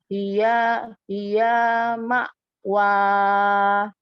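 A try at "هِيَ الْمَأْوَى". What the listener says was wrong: Hiyal. Kan lam sukunnya ada. Hiyal ma'wa.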